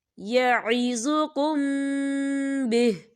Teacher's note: میم ساکن کے بعد با آ رہا ہے، تو یہاں پر اخفا شفوی ہو رہا ہے تو ہم یہاں غنہ کریں گے